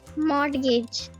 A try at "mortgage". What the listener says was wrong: No, it's not mortgage. The letter T here is silent. As I said, there are no rules to apply on which letters are silent. But in this specific word, the silent letter is T.